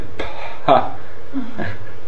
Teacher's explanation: after the release of the consonant there's a gap in which is a free flow of air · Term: aspirated stops